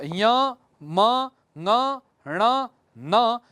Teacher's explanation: इनका उच्चारण स्थान जो है नासिका भी होती है